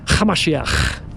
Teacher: You have to add a little bit of a throaty little ch.